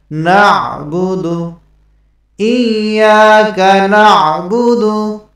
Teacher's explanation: ইয়াকা না'বুদু, ইয়াকা, ইয়াতে এক আলিফ পরিমাণ টান হবে, জবরের বাম পাশে খালি আলিফ, এ কারণে ইয়াকা না'বুদু। আইনের উচ্চারণটা হলকের মধ্যখান হইতে চাপ দিয়ে